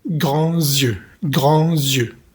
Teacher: Aquí hacemos la liaison entre la S de la palabra grand y la palabra yeux.